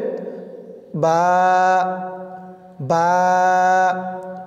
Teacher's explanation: আপনি যখন দুইটি ঠোঁট একসাথে করবেন তখন আপনার ঠোঁটের মাঝখান থেকে আওয়াজটা বের হবে, বা বা। দুই ঠোঁটের ভিজা জায়গা হইতে উচ্চারিত হয় বা।